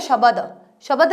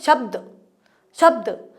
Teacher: ब के बाद में हमारा मुंह जो है हमारे लिप्स से वो बंद रहता है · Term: आधा ब